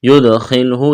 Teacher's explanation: یدخلہ، دال پر قلقلہ کریں گے، خا کو موٹا کرنا ہے